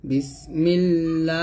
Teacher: আল্লাহর সাথে লাম জের আসছে তাই লামটা পাতলা হবে